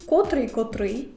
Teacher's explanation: на другий склад падає наголос у слові